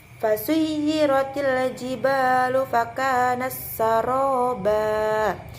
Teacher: Jadi setiap tak bertemu dengan sin itu dibaca idgham, yaitu taknya dihilangkan dan kita langsung melanjutkan ke huruf selanjutnya, yaitu ke sinnya tersebut.